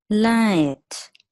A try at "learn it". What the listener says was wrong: That the I sound was correct, but you missed the N. So learn it. So we don't want the space between it, just like you did here with considered it.